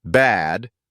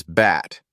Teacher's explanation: Bad versus bat. The vowel in bad is longer, while the one in bat is shorter. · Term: vowel length